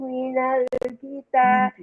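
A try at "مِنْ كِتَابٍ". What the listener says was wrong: Bukan minal, min kitab. Ming ya.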